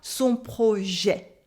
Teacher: So mener son projet with an open E at the end of projet. The silent T at the end as well.